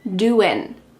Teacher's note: What's happening with the G at the end? Doing. It's gone. It is on vacation.